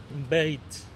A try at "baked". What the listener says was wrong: Bake. So that hard K sound. Baked.